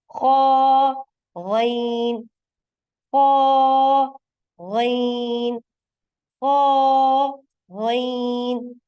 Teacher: आपको महसूस हो रहा होगा कि आपकी जुबान की जड़ जो है वो तालु की तरफ बुलंद हो रही है।